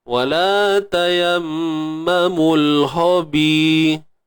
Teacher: Huruf ha yang diisti'la'kan, ditinggikan pangkal lidah jadilah ho